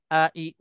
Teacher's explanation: Bila kita kenal hamzah ni, a, i, u ni tempat keluarnya di pangkal halqum